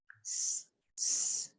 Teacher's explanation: So when you pronounce this, s, our vocal cords do not vibrate. We don't get any vibration in this. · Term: unvoiced